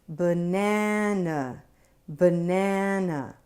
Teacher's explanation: Right there—in buh and nuh—we hear schwa.